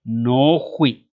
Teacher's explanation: las tengo que separar para que se puedan leer de manera más clara como dos vocales, pues, y no una larga